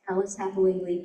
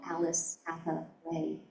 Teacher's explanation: the assonance of the A's in Alice and Hathaway, the hard stress at the end of Lee, the consonants of I in Alice and Lee, and the triptych pattern in the first two beats like a pleasant fall, Alice Hathaway.